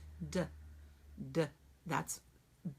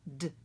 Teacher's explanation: D is voiced, but it should not have that vowel at the end. It should be simply d.